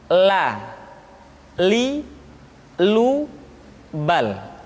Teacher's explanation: huruf la diucapkan dengan mengangkat ujung lidah kita, dengan disentuhkan dengan langit-langit.